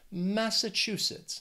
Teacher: They also have four syllables and the stress is on that third syllable, that chew. Massachusetts.